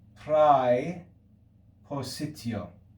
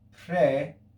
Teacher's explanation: a diphthong in classical latin we would say prai positio in church latin we say frey